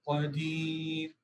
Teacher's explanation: اور قاف جو ہے وہ آپ اس کو موٹا کریں گے